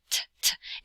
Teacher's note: the English T where it has like that clicking sound, t, t, t, and a puff of air. Hold up your hand in front of your face and say T, T, T, or T, T, T, you feel a puff of air.